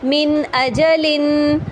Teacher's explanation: اب دیکھیں میں نے یہاں پہ جو من ہے اس کو پورا واضح ادا کیا، یعنی نون ساکن کو میں نے واضح ادا کیا، یعنی اس کے مخرج کے ساتھ